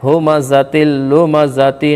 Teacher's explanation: ہمزۃ تل میں ادغام تام بلا غنہ ہوگا